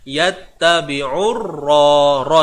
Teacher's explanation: urra ni alif lam syamsiyah dan ra ini dibaca dengan sifat yang tebal.